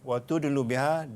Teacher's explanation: dal ni qalqalah sughra. Jadi bacanya berdetak sikit.